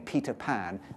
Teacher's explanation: we can see that she's got a nice puff of air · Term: aspirating